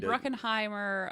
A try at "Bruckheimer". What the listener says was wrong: Bruckheimer. Not Bruckenheimer. There is no E-N in there. Anyway, it's just Bruckheimer.